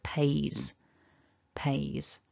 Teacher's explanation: then our third person even though it's written with an s because pay ends in a vowel which is voiced the s is realized as a voiced z sound